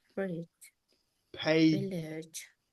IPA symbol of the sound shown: d͡ʒ